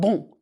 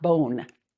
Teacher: Keep the sound in your nose and don't shut down the N. You want bon, not bone. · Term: Nasal vowels